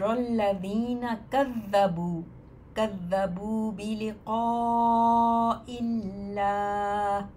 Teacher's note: قا کو آپ دیکھیے مد بھی ہے اوپر، چار حرکت اس کو لمبا کریں گے